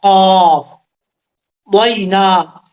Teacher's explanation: لیکن وقف کریں گے تو شکورا وقضینا، قاف حروف مصالحہ میں سے ہے، پر پڑھا جائے گا، اور دو نقطہ والا قاف اس کا مخرج ہے، زبان کی جڑ اوپر والے تالو کے نرم حصے سے لگے تو قاف پڑھا جاتا ہے